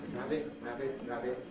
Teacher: Rabbit with a glottal stop at the end